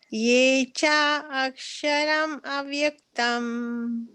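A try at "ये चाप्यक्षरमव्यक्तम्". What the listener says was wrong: Yeah, it is not ye cha aksharam, it is ye chapyaksharam. So it is api, the word api that you see in the synonyms below, the where you see the breakup of the words. It is cha, three words.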